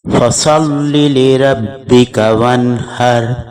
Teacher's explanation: اگلی آیت میں صاد کو پور پڑا جائے گا، اور ہا کی آواز جو ہے یہ تھوڑی مختلف ہوتی ہے، وسط حلق سے گلے کو پچکا کر ادا کی جاتی ہے۔